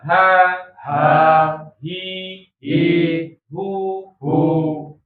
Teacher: huruf ha ha makhrojnya ditenggorokan bagian bawah atau di jakun